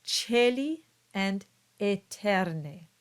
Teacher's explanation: Now, in Latin, we have the OE and the AE ligatures. The two vowels together produce a single sound. They produce the sound E.